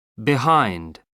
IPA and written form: bɪˈhaɪnd (behind)